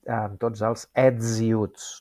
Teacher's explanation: com que hi ha a continuació una vocal, aquesta S se sonoritza i diem amb tots els ets i uts, no diem ets i uts.